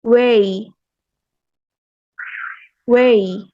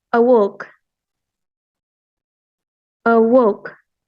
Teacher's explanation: The W is bilabial glides and the Y is the alveopalatal glides.